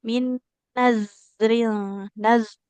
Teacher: Dalam pengucapan huruf zal makronya sudah sesuai, tapi aliran suaranya terlalu cepat.